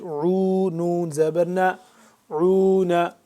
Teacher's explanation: حلق کے درمیانی حصے سے عین ادا ہوتا ہے اور کھچاؤ تھوڑا سا پیدا کر کے